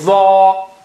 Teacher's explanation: when you say tho, so the Alif also will have a thick sound